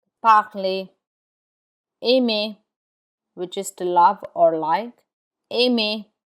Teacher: the R is not pronounced in words that end in ER.